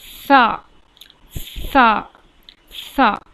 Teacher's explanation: ज़बान की नोक थोड़ी सी बाहर आनी चाहिए दोनों ऊपर और नीचे की दांतों के बीच में से। बिल्कुल बारीक सी ज़बान बाहर आनी चाहिए, बहुत मोटी ज़बान बाहर नहीं आनी चाहिए।